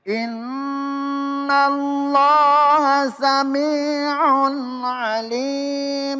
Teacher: Inna di situ ada tasdid. Ada tasdid. Yaitu harus dibaca dengung. Hurufnya ada dua, nun dan mim.